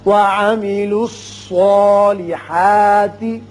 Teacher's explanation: یہ صاد حروف مستعلیہ میں سے ہے، پر پڑا جائے گا. اس کی وجہ سے جو کھڑا زبر ہے الف کا قائم مقام وہ بھی پر ہوگا.